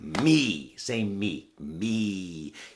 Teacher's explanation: you can hear it wants to be high it's really high energy it wants to go up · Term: the e sound